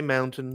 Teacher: she'll enunciate the T at the end of a word that most Americans wouldn't